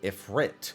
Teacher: I've been pronouncing it with an emphasis on the first syllable